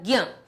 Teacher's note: ज्ञ, ज्ञ को ज्ञ भी पढ़ा जाता था क्योंकि इसकी ध्वनि जो है ज और य से मिलकर बनी है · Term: संयुक्त व्यंजन